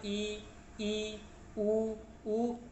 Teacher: ऐसे स्वर वर्ण जब जिनका हम उच्चारण करें तो हमारा जो मुंह है वो बहुत कम खुलता है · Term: संवृत